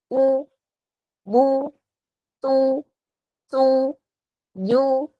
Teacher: untuk harokat dhammah dengan memonyongkan kedua bibir dan bunyinya seperti u